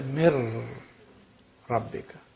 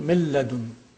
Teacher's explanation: Noon has no sukoon, and the following first letter has a shadda. That means noon is assimilated in the next word, the following letter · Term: complete assimilation